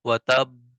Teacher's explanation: دیر بھی لگی اور اس کے بعد قلقلہ بھی زیادہ ہوا